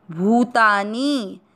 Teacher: भू की मात्रा बड़ी, लंबा खींचना है, भूतानी। नी को मात्रा छोटी है इसलिए इसको लंबा नहीं खींचना, मतलब अधिक उच्चारण में समय किसको देना है, भू को।